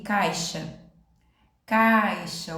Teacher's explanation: vogal o som da letra i que sai o caixa eí o som já diminuiu a gente chama de semivogal